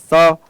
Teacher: स का उच्चारण स्थान भी दंत होगा।